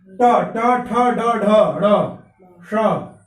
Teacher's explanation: अब देखिए री का उच्चारण स्थान मूर्धा होता है।